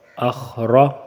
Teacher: اس کے را کے اوپر زبر ہے تو را موٹا ہوگا